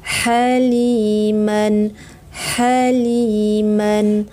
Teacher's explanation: Ha pedas, di tengah tenggorokan